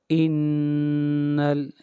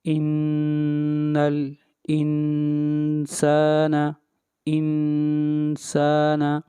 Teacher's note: نون کے اوپر شد ہے، آواز ناک میں جائے گی اور غنہ 1 الف کے برابر کریں گے۔